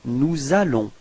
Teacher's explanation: you can notice the liaison between S and A